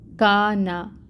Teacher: یہاں پر الف سے پہلے کاف کے اوپر زبر کی حرکت ہے، کا کو 2 کاؤنٹس لمبا پڑھیں گے، الف مد ہو رہی ہے، اور پھر نون کے اوپر فتحہ کی حرکت ہے، 1 کاؤنٹ پڑھیں گے۔